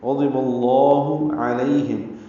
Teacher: عین وسط حلق سے ادا کریں گے